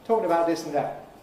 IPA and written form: ˈtɔːkɪn əbaʊʔ ˈdɪs ən ˈdæʔ (talking about this and that)